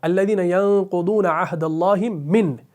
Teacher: اگر کسی نے من پر ہی وقف کر دیا الذین ینقضون عہد اللہ من، تو نون کو ظاہر کرنا پڑے گا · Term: وقف بالاظہار